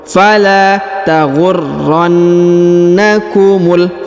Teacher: Fala taghurrannakumul. Perhatikan huruf ra berharokat tasdid, huruf na berharokat tasdid ya, maka ditahan dan ditekan pada setiap masing-masing huruf.